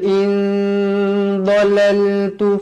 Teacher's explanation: nun kosong bertemu dhad, hukumnya dekat sini ikhfa hakiki, dibaca dengan dua harakat. Dhalaltu fa in wajibul gunnah, dibaca dengan dua harakat, wajib dengan dua harakat.